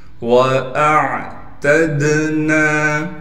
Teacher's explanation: عین ساکن ہے، عین کو صاف کر کے گلے کے درمیان سے نکالنا ہے